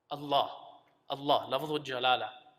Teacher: when uh you're saying Allah you're supposed to say it with a full mouth